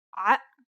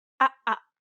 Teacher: The second sound is actually deeper in the throat than the first, so deep in fact that it causes the vocal cords to stop momentarily, causing a buildup of pressure. It's the sound you make in between the and o in uh-oh.